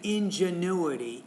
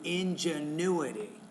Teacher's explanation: So stress is on the U, ingenuity.